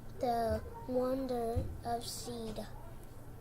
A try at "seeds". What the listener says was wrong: Of seed. You said seed. How about this S down here, back here? Seeds.